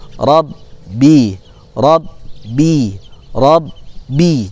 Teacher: setelah huruf ro maka bertemu dengan huruf ba bertasydid maka ditahan dulu ya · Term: bertasdid